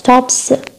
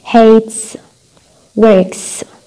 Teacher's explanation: يعني حطينا أصبعنا على vocal cords أحبالنا الصوتية وحكيناها ما رح تهتز أحبالنا الصوتية لأنه voiceless. فإذا كان قبل حرف الأس هو صوت voiceless، مثل شو voiceless sounds؟ مثل صوت الـ p t والk. okay the s اللي هو في النهاية رح يكون pronounced س